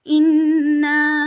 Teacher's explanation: Then we have to do gunna in noon, and noon is also alif madda. So we have to stretch, perform gunna at noon for 2 seconds, then extend it for 4 to 5 seconds